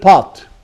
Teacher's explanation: so this is back open longer and unrounded